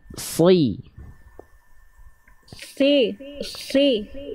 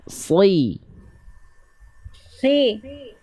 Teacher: lafalkan sod itu pangkal lidahnya diangkat, ya, lidah terdalamnya diangkat karena dia huruf yang tebal. Seperti Bunda mendorong lidah Bunda ke arah dalam. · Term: huruf Shad, huruf sod